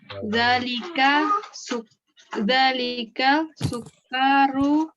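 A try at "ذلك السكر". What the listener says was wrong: Dalikas sukaru. Kayaknya nggak panjang, Bu. Dalikas sukaru. Jangan mentang-mentang tasdid dipanjangin, Bu. Dalikas sukaru. Sukaru. Sinnya juga tasdid, Bu, karena al-syam siyah.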